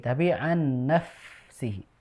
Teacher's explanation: untuk fa yang sukun ya, maka dialirkan udaranya ya. Jadi jangan sampai terbatas seperti p yang sukun.